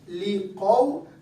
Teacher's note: اب میں نے واو حرف لین کو لمبا نہیں پڑھا